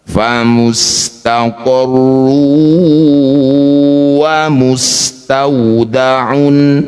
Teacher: Rumah tanwinnya masukkan pada huruf wau. Dengungkan dua harakat. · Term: idgham bighunah, idgham bi gunnah